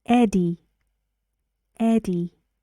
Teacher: and the stress goes on the first syllable